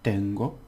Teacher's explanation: Now this has two syllables. So the first one has the stress.